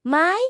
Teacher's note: Third tone though, dip down, then up, like you're asking a question.